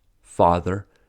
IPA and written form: fɑːðə (father)